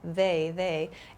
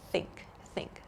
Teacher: so in the word think I'm not using my vocal cords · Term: unvoiced th sound